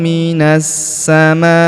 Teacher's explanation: huruf ma kita panjangkan empat atau lima harakat